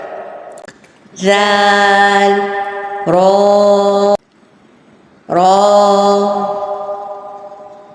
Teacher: جیسے سا زبان کی نوک سے پڑھا تھا ہم نے، باریک پڑھا تھا، اسی طرح رال زبان کی نوک سے اور باریک پڑھا جائے گا